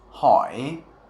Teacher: It goes down and then back up again, kind of like the third tone in Chinese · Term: hook tone